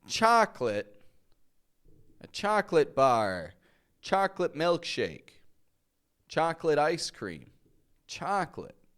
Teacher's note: I'm not adding that extra O. I'm just saying chocolate.